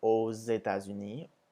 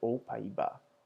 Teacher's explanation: AUX, which is pronounced as O, but when it comes before a vowel, you make the Z sound